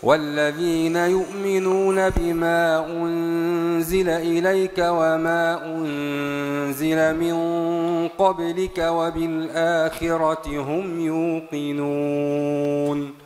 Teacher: قالون بالقصر بدون صلة